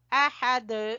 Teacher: اور دال کے اوپر ہم قلقلہ کریں گے، احد، یہ قلقلہ ہوتا ہے۔